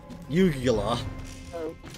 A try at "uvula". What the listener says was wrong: It's a uvula. There's no G in that word.